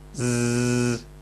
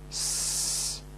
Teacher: Well, if you have difficulty with S, there is a good chance that you're lisping Z as well. The Z sound is made in exactly the same way as the S sound. The only difference is voicing.